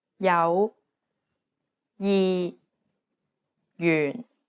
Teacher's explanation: although it's represented as a j it actually sounds like an English Y sound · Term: J consonant